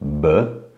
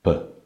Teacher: First as a voiced sound, B, and second way of pronunciation is as an unvoiced sound, B.